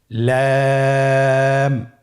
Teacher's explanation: লাম হরফটির মাখরাজ হলো জিহ্বার আগার কিনারা উপরের দাঁতের মাড়ির সঙ্গে লাগিয়ে উচ্চারিত হয়।